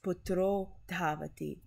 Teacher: when a Visarga is preceded by an A and it's followed by a soft consonant, the Visarga is changed to the vowel sign O.